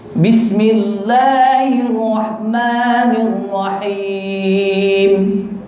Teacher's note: Huruf hamas sebutan berangin. Ni termasuk bis. Kena ada angin.